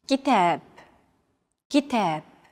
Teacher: notice that the second syllable is stressed it's pronounced longer and louder while the first and final syllables are shortened kitab if you